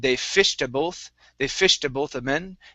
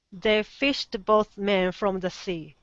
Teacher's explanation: So you added a vowel sound in between fished and both.